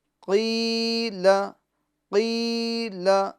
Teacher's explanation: قی کو کھینچے لام کو نہیں کھینچنا